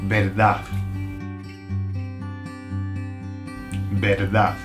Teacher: The Spanish don't pronounce the last D. Either they'll say verdad with a verdad, or they'll say nothing, like they'll leave it hanging, like verdad.